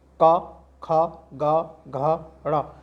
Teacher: ठीक है, तो कहाँ से बोले आवाज़ आ रही है, हमारी कंठ से आ रही है, का, खा, गा, घा, ड़ा, यानी कि कै वर्ग पूरा कंठ से बोला जाता है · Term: कंठीय वर्ण